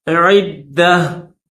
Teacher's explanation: اگر اسٹاپ کریں گے تو پھر یہ جو گول تا ہے اس کو تا کے ساتھ نہیں پڑھیں گے بلکہ اس گول تا کو ہا کر کے پڑھیں گے